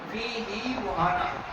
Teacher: फीही मुहाना, जब हम बच्चों का सबक सुनते हैं तो इस जगह पर गलती हो जाती है, हा के नीचे फीही मुहाना पढ़ देते हैं। यहाँ पर इस हा को थोड़ा खींच कर पढ़ेंगे, फीही मुहाना, इस तरीके से।